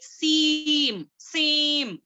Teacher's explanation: नून को हाइड कर देंगे, सीम, सीम, इस तरीके से पढ़ेंगे, ठीक है?